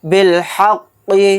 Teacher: اگر ہم آیت کریں گے، سانس توڑیں گے تو قاف کو ساکن بنا کر پڑھیں گے، اور یہاں پر قاف ساکن ہوگا تو اس کے اندر قلقلہ بھی ہوگا